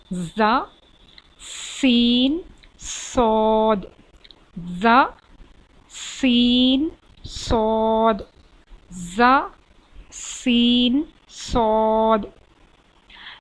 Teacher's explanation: इन तीनों र्फ में थोड़ी सी सीटी जैसी आवाज निकलेगी